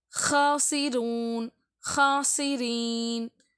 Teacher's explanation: ஹா வந்து தொண்டையின் நடுப்பகுதி இருந்தாலும் அது கொஞ்சம் காரி சொல்ற மாதிரி சொல்லணும்